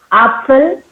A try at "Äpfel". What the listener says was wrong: Stopp. Äpfel. A mit Umlaut.